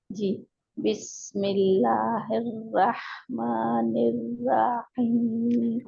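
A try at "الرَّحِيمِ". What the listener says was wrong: निर्रा रा को खींचना नहीं है क्योंकि हम हरकत ज्यादा खास पर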